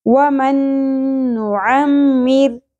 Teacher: را باریک پڑی جائے گی کیونکہ را ساکن سے پہلے زیر آ گئی